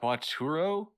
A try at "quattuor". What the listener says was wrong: Right. Quatuor. There's an R at the end.